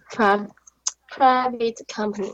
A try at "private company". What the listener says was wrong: Right.